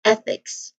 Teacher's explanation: So here it uses a voiceless th sound.